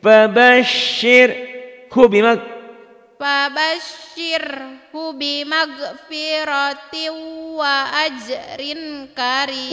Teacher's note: kalau kasratain ketemu waw ini idgom. Jadi bimaghfirati bunyinya dibaca satu. Wa ajrin ini coklat tapi enggak ada tasdid.